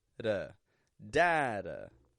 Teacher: Strong in the beginning. That first D gets a strong, true D sound. Da. The second, a flap T. Very quick and very quiet. Da. Data.